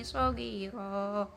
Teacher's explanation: ada fathah tanwin di akhir kata, kemudian dibaca fathah biasa namun agak diperpanjang, jadi itu disebut mad iwad, mad pengganti.